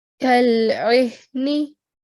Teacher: the sound of ayn comes from the middle of the throat, so make sure to give it the right sound.